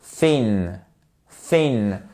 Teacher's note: vous sortez la langue entre les dents du bas et les dents du haut, mais vous ne touchez pas ni les dents du bas, ni les dents du haut. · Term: soft TH